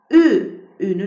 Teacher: Dü də söyləyərkən dodaqlarımız önə doğru gəlir və dodaqlanan saitdir.